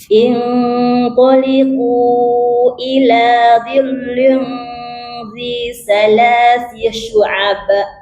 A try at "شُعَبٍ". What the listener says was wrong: Syu'aba, bukan syu'aba. Syu'ab. Be. Kalau qalah bunyinya be ya, bukan ba.